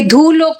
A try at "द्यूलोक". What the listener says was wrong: ये द्यूलोक, द्यूलोक नहीं बोलना, ध नहीं बोलना होता, द्यू बोलना होता है।